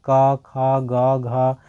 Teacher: इस सभी का डायरेक्ट आवाज जो आता है यह कंठ से आता है